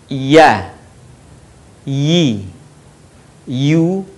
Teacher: keluar dari tengah lisan disentuhkan dengan langit-langit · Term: huruf ya